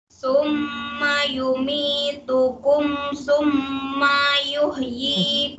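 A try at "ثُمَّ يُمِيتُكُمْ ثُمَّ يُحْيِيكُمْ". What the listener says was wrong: Sumayuh, manya jangan diayun. Mayuh terayun. Sumayuh, cepat pindahnya.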